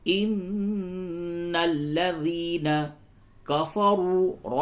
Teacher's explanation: ان الذین کفروا، نون مشدد ہے، غنہ کیجئے، ان الذین کفروا، را کو پر کیجئے، اور واو مدہ ہے، اسے کھینچئے